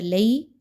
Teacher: علینا، لام یا زبر لئی، یالین ہے، 1 سے 2 الف کے برابر اس کی ادائیگی کو رکھیں گے